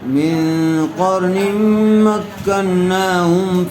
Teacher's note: نون ساکن کے بعد قاف آیا ہوا ہے، غنّے کے ساتھ اخفا کر کے پڑھیں گے